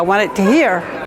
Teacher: The second feature here is a glottal replacement of final consonants. You can hear the glottal stop instead of a T.